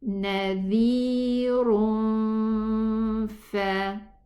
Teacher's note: Nadhirun fa. Go to the makhraj of the fa, and the makhraj is using the above 2 teeth, sliding inside against the lips, the lower lips, inside, from inside, the wet part.